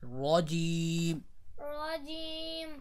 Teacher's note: را کو پر کریں گے زبر کی وجہ سے